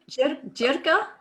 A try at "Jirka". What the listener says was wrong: Yeah, but the pronunciation is like with epsilon, so it's like Yirka.